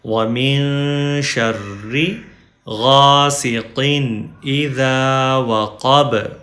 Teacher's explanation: وقف کی وجہ سے ہم با کی زبر نہیں پڑھیں گے